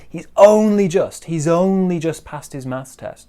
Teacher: we have big stress on only and then maybe slightly smaller stress on just